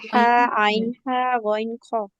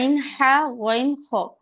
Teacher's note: আইনের পরে যে হাটা আছে ওইটা কিন্তু গলার ভিতর থেকে আসবে